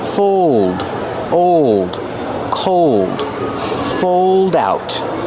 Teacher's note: Use the long O like old and cold plus a dark L.